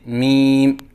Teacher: آواز ناک میں لے کے جانا، جیسے میم، یہ غلط ہے